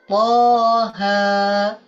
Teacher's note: Tapi jangan dibaca pendek, tetap harus dibaca panjang 2 harokat.